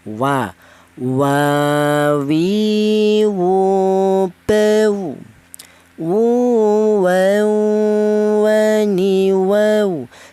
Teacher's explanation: huruf wawu itu dihasilkan dari kedua bibir yang renggang. Tidak boleh rapat, kalau rapat malah salah ya, wa ya.